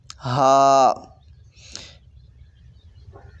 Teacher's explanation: سادہ ہا آواز نکالیں گے، حلق سے نہیں نکالیں گے، ہا یہ نہیں پڑھیں گے، بلکہ ہا سینے کی جانب سے آواز نکلے گی۔